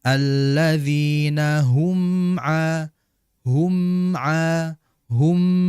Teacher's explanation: jelaskan sifatnya ghunahnya dan juga makhrajnya di dua bibir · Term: izhar syafawi